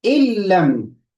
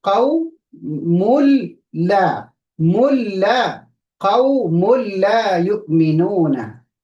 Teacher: we merge the noon completely into the lam. In lam becomes illam. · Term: idgham